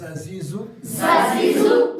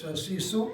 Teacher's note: دونوں دانت آگے ملیں گے، زبان کی نوک پیچھے آ جائے گی، مگر سوراخ بند نہیں کریں گے